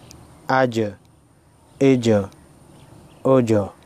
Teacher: جیم حروف قلقلہ میں سے ہے لہٰذا ہلا کر پڑھیں گے